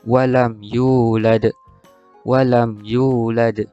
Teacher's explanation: bunyi lantunan pada huruf dal di akhir kalimah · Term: qalqalah kubra